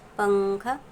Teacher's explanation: نون کی آواز کو یہاں پر ہم کو ناک میں چھپانا ہے